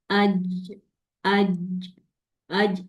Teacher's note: जीम की sound में च की साउंड नहीं आनी चाहिए।